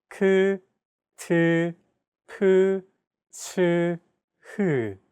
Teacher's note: Aspirated sounds are pronounced with a big burst of air, unlike plain sounds which do not have this quality.